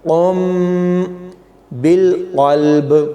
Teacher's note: باللسانی، یہاں پر قاف کو میم کے ساتھ ملائیں گے، قاف موٹا پڑھا جائے گا اور یہاں پر غنہ ہوگا۔